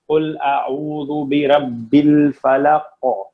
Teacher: یعنی جب آپ اس کو سکون کے ساتھ پڑھیں گے تو آپ پڑھیں گے قل اعوذ برب الفلق, تو قاف موٹا تو ہے, مستعلیہ تو ہے, لیکن اس پہ قلقلہ بھی آ گیا ہے سکون ہونے کی وجہ سے